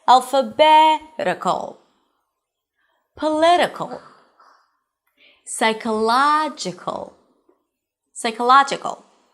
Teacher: The suffix is -k'l, Primary stress, one syllable before the suffix.